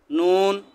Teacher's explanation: জিহ্বার আগা তার বরাবর উপরে তালুর সাথে লাগিয়ে